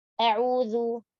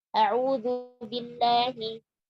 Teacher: bacalah hamzah dengan jelas dan tipis. Jangan tebal, jangan imalah, dan jangan tashil. Tidak o, tidak a'u, juga tidak au.